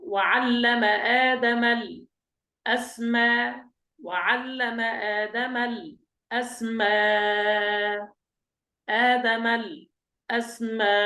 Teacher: ونبدل الهمزة الثانية ألفا مع المد والتوسط والقصر